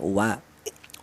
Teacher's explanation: keluarnya huruf berasal dari kedua bibir yang renggang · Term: huruf wawu